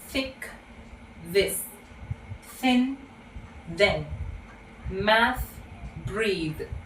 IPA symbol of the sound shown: θ